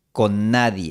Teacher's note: Las dos /n/ se fusionan en una [nː] larga. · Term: consonante larga, n larga